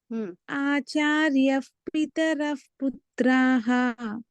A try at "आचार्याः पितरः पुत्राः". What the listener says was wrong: అయితే ఆచార్యఫ్ అంటున్నారు, ఆచార్యకి దీర్ఘం ఉంది, ఆచార్యాఫ్ అనాలి.